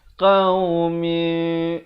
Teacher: Kerana cara menyebutnya itu, lihat bibir saya. Qaumi, bibir atas dengan bawah tu dia hampir bersentuhan sahaja 2 harakat. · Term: iqlab